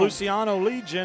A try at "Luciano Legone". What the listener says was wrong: Legone is how you pronounce that. I called him Legion. Coach told me it's Luciano Legone.